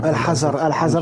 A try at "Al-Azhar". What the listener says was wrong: Azhar, pas Hazard. Pas Hazard. Dis Azhar, dis Azhar.